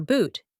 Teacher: For boot, your lips round and protrude, creating an additional air chamber that filters different frequency sets.